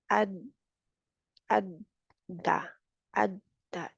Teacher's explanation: दो ऊपर वाले दांतों के जो जड़ है वहां पे, वो बम्पी सा एरिया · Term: दाल